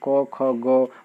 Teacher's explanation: और इसी वर्ग का हमको तीसरा अक्षर लेना है, तो क ख ग, और ग का भी उच्चारण स्थान क्या होता है, तो अकु विसर्जनीय नाम कंठ से क्या होता है, ग का उच्चारण स्थान भी कंठ ही होता है